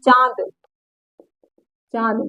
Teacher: अनुनासिक का मतलब होता है जो नाक और मुंह, नाक और मुंह दोनों से बोला जाए उसी को कहते हैं अनुनासिक